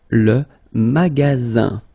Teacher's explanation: you've got only one S between two vowels. Then you get the sound Z